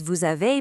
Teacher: When a word ends in a silent S or X and the next word kicks off with a vowel, that S or X magically turns into a sharp Z sound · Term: liaison